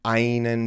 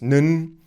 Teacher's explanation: So in German, einen becomes nen, and so ein becomes so'n. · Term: pronunciation reductions